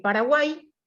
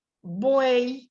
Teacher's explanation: tenemos una vocal cerrada la vocal abierta y la vocal cerrada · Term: triptongo